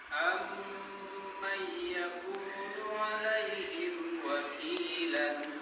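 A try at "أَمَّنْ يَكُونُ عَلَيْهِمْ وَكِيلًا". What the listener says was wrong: Ditahan dulu lama, ada gunnahnya. Idgham bukan gunnah kamilah. Gunnah yang sempurna seperti panjang 2 harokat.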